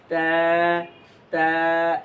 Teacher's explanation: আপনার জিহ্বার আগা আর সামনের 2 দাঁতের গোড়া, এই গোড়ার অংশ থেকে আমরা তা উচ্চারণ করব এবং চিকন আওয়াজে উচ্চারণ করব।